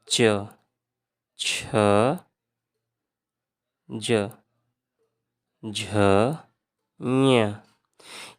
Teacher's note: जो तालु से बोले जाते हैं, तालव्य। तालव्य में आ जाएगा च, छ, ज, झ, ञ।